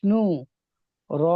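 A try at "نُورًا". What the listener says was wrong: নু আলিফ, র নুন, র নুন দুজাবার রন, নুনকে ধরতে হবে। র নুন দুজাবার রন।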